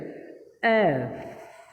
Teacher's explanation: উপরে দুইটা দাঁত নিচের ঠোঁটের সাথে লাগিয়ে উচ্চারণ করতে হবে